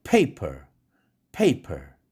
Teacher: 앞에 P는 강하고 per라는 음절은 액센트가 없는 음절이니까 weakly aspirated P 사운드여서 약하게 에어스트림이 쏟아져 나옵니다.